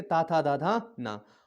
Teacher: दांत से कौन सा वर्ग बोला जाएगा, ता वर्ग